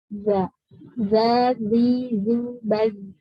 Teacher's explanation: Tapi za itu termasuk yang jahar. Jadi ditahan nafasnya jangan sampai keluar.